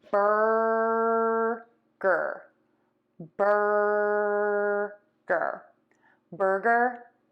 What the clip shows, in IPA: ˈbɜrɡər